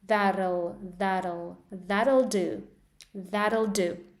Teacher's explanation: So your tongue has to be really fast from going from t to l